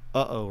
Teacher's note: there's no glottal stop in English, really, other than uh-oh, right?